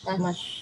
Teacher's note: Jadi shin ni dia punya sifat berdesir. Jadi pastikan ada desiran shin tu kalau ngaji ya. Sha, shi, shu.